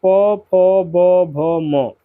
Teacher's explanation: तो इन सभी वर्णों का उच्चारण ओष्ठ से होता है यानी कि होठों के द्वारा होता है।